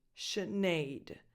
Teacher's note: you start with a sh sound, sh, not an S, a sh. And then a lax I, as in the pronoun it, Sinead.